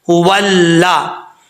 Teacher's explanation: واو لام زبر ول، لام زبر لا، ولا۔ جب واو کو لام سے ملائیں گے تو بیچ میں جو الف ہے یہ گر جائے گا، اسکپ کر دیں گے، ولا۔